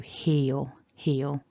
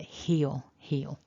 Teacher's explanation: at the front of the mouth or at the back here because it's after a vowel and it's at the end of a word it's a kind of darker sound it happens further back